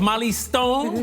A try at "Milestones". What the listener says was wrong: Hello, it's Milestones. It has milestones. You don't mention the I. No, It's my surname and Stones. Without the I.